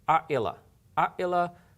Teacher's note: instead of flowing like in one flowing sound like I Allah it's like an abrupt break in the middle and that's what it does our Allah our Allah verses I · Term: Hamza